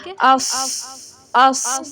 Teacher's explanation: زبان کی جڑ اوپر تالو سے لگتی ہے تو موٹا پڑا جاتا ہے